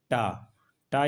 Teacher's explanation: अघोष है अल्प प्राण है